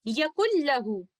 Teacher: اسی طرح اگلی مثال یقل لہو میں لیٹر نون اور لیٹر لام متقارب صغیر ریلیشن شپ میں ہیں. نون ساکنہ کو ادغام کامل کرتے ہوئے ہم اس طرح سے پڑھیں گے